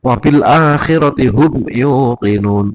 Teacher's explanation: Nah, ee ini mim ketemunya itu izhar syafawi. Membacanya jelas, tidak terlalu lama sehingga tidak berdengung.